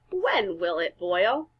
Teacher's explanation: you notice my voice went up at the end because there's a question mark